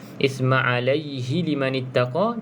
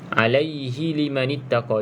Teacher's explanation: kalau kita sambung pada perkataan isma alaihi liman ittaqa, dia tidak ada hukum mad lah. Sebab dia akan jadi pendek je. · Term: mad asli biasa